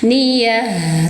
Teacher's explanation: tak marbuto diganti menjadi suara ha, alirkan suaranya ha